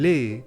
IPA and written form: lɛ (les)